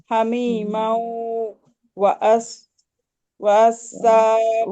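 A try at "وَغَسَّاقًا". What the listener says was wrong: ওয়াগস, ওয়াগসাক। আপু এটা আইন না, ওটা কইন।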